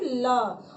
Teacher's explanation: जो हवा निकलती है वह जीभ के दोनों साइड से निकल जाती है, ठीक है। जब उच्चारण करते वक्त हवा दोनों साइड से, जिह्वा के दोनों साइड से निकले तो उसे पार्श्विक स्वर कहते हैं, और वह मात्रा में एक है, वह है ल। · हवा साइड से निकल रही है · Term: पार्श्विक व्यंजन